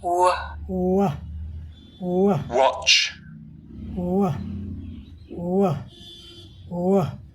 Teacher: गले में हमारा जो वोकल कॉर्ड स्वर तंत्र है, इसमें कंपन होता है